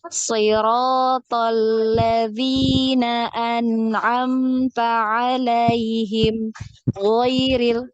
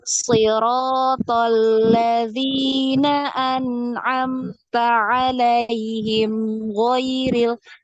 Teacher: Jadi tidak ada jeda, ya. Tidak ada jeda di antara huruf mim dan huruf ghain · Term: dialirkan mimnya